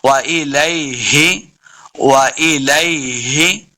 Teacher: ہا وہی جو حلق کے نچلے والے حصے سے ادا کرتے ہیں، اس کو پڑھتے ہوئے یہ اس بات کا خیال رکھنا ہے کہ ہا کو پڑھتے ہوئے ہا اور خا کی آواز نہیں آنی، بلکہ ہا حلق کے نچلے والے حصے سے اس کو ادا کرنے کی ہم نے بارہا پریکٹس کرنی ہے۔ · وَإِلَيْهِ وَإِلَيْهِ تُحْشَرُونَ تحشرون، ہا کو لفظ کے ساتھ پڑھنا ہے، شین پہ سیٹی کی آواز آئے گی۔ رون، را پیش واو رو، واو مدہ ہے، اس کو دو حرکات لمبا کرنا ہے، را کو بھی پر پڑھیں گے، اور آخر پہ ہم نے وقف کرنا ہے۔